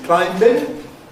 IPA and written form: ˈklaɪmbɪŋ (climbing)